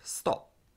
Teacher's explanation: the frequently muted p at the end of stop